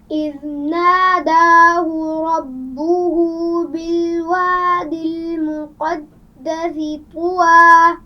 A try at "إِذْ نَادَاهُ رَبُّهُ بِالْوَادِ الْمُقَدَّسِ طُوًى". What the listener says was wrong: المقدس طوى. سین کی آواز میں سیٹی ہوگی.